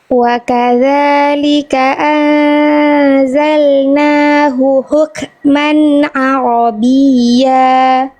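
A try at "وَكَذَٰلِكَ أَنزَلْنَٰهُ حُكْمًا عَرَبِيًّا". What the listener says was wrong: H kecil yang awal. Eh, H kecilnya kurang dapat. Sekali lagi saya contohkan dulu.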